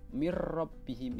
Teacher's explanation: nun sukun bertemu dengan huruf roh cara membacanya itu tidak berdengung · Kemudian selanjutnya adalah hukum bacaan idgham bila hunnah. Nun sukun bertemu dengan huruf ra. Cara membacanya itu tidak berdengung. Kalau yang tadi idgham bi hunnah itu berdengung, yang ini mir rabbihim itu tidak berdengung. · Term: Idgham bilagunnah